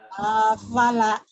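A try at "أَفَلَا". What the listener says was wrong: Bukan bu, yang panjangnya lanya doang. Afala.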